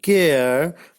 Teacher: In final position, the second element is a central unrounded vowel just below the half open position.